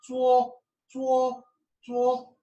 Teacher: first tone is a high tone so it's set high and flat